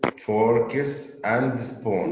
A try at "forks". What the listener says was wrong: Not forkies, forks. Forks.